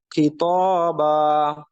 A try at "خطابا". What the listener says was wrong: خطابا বা মোটা না বা বা خطابا